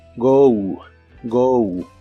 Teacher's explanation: se pronuncia como si terminara con una u